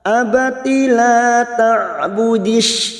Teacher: ain sukun jangan samakan dengan hamzah. Ain sukun memiliki sifat tawasud.